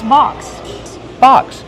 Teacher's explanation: Use the open ah sound like hot and stop.